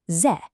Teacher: This is a fourth tone, the falling tone. I want you to think of it as a sharp, decisive command.